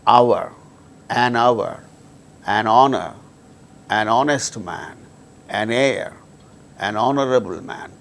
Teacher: In all these cases, these words begin with H, which is a consonant letter, but H becomes silent and these words produce initially vowel sound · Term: silent H